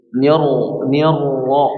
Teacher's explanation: Jadi nunnya tipis ya. Nunnya tipis tapi langsung masuk ke huruf ro. Jadi yang ditebalkan rnya bukan nor tapi nir.